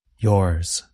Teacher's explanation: notice that the S at the end sounds like the letter Z. Z.